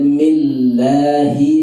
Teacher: lamnya itu dibaca tipis karena kasrah mi-nya. Millahir, ra-nya ditekan.